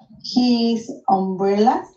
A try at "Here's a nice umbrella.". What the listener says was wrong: Here's a nice umbrella. a nice umbrella. Le agrega la apóstrofe y la S y se pronuncia here's a nice umbrella.